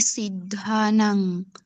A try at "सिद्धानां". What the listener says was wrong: सिद्धा नम नहीं, सिद्धा नाम। खींचना पसंद नहीं आता है क्या आपको? चरना भी ऐसे गाते थे, वो कौन, हाँ सस्मिता भी ऐसे गाते, आप भी ऐसे गाते हो। जल्दी जल्दी भागने से होता है ये, कुछ